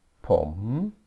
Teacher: the word is pom with a questioning tone